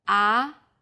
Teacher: The second tone starts with a middle pitch, then rises quickly.